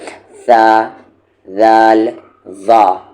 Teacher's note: زبان کی نوک اوپر کے سامنے والے دو دانتوں کے سرے سے یعنی کنارے سے ٹکرائے تو یہ تین حروف ادا ہوتے ہیں، نکلتے ہیں، جیسے ثا، ذال، ظا۔ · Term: حروف لثویہ